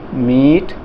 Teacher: ई का उच्चारण थोड़ा दीर्घ हो गया, थोड़ा लंबे समय के लिए बोला है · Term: दीर्घ स्वर